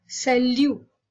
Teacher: They do not pronounce the final consonant.